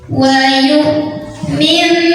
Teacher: Ada hamzah punya sifat namanya syiddah, jadi suaranya tertahan yang kuat.